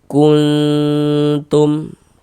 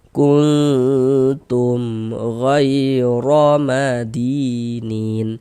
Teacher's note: Kuntum dipanjangkan sebentar gitu didengungkan. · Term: ikhfa hakiki aqrab